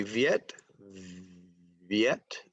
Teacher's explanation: the V sound is voiced